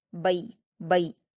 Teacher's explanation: با پر یا لین دیا ہے تو اس کو معروف آواز کے ساتھ نرم اور جلدی پڑھیں گے